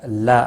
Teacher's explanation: الف مدہ ہے، ایک الف کے برابر کھینچ کر پڑھیں گے